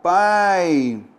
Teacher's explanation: Pai, eu tenho vogal A e semivogal I. Olha só como houve um desnível.